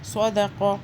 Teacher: صاد کو بھی موٹا پڑھیں گے، سو کریں گے، سا نہیں باریک نہیں کریں گے۔